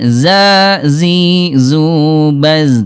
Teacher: Huruf zai ini huruf zai ayah bunda sekalian dia jahr tidak ada udara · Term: jahar